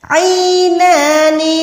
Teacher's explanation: نون کو 1 سیکنڈ آپ نے لمبا کر کے کھینچنا ہے